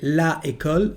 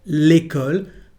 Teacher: we are not going to say la école, but l'école, because there is a contraction between the two words